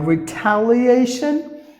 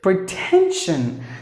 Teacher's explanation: you must not pronounce the T like the D because it is a stressed syllable